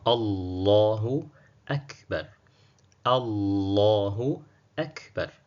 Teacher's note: Lakini wakati huo huo, mfano Allahu Akbar, tutaangalia hapa jina la Mwenyezi Mungu ambalo ni Allah limetanguliwa na fatha, kama tulivyoona kule mwanzo kwamba hamza tuliwasilikiwa mwanzo tunaiweka fatha. Kwa jina la Mwenyezi Mungu likitanguliwa na fatha linakuwa zito mdomoni.